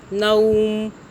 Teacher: یہاں پہ ہم مدہ نہیں کر رہے، یہاں پہ لین کر رہے ہیں ، نو، نون کو زبر کے ساتھ، واو کو اکنالج کریں،